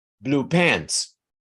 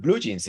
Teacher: you emphasize the adjective the first word